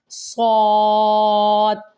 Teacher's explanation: شین، آگے ہے صاد، اس کو موٹا اور منہ گول کر کے پڑھیں گے